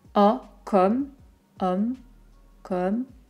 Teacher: Attention, comme, O, un petit peu ouvert. Pas le O très fermé de contrôle, par exemple.